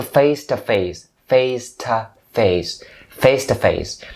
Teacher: instead of saying two you can turn it into ta